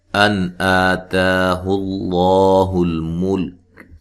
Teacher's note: نون ساکن کا یہاں اظہار ہے، غنہ نہیں کریں گے